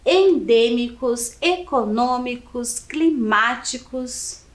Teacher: todas as palavras acima tem a antepenúltima sílaba mais forte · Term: proparoxítonas